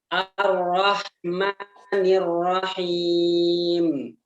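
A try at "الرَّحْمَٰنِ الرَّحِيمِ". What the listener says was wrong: Begitu juga dengan ma. Ar-Rahmani. Mani. Sekali tekan saja. Mani. Ar-Rahmani. Enggak. Itu 3 harakat. 2. Ar-Rahmanir-Rahim.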